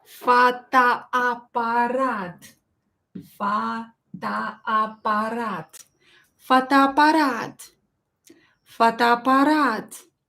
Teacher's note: So we have two O's, which will be pronounced as A.